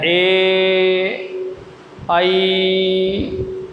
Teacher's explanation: ए और आई का उच्चारण स्थान कंठ और तालु की सहायता से होता है। ए, आई, तो ए और आई जब बोलते हैं तो जोर कंठ पे पड़ता है और जिह्वा तालु की ओर इशारा करती है, इसलिए दोनों को मिलाकर के दे दिया। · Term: कंठ तालु